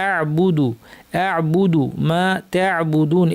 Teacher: আইনটাকে গলার মাঝখান থেকে সুন্দরভাবে চাপ দিয়ে আমাদেরকে উচ্চারণ করতে হবে। আ'বুদু আ'বুদু মা তা'বুদুন।